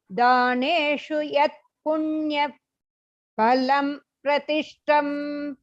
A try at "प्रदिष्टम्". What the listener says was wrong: दा சொல்றீங்களா தா சொல்றீங்களா பிரதிஷ்டம்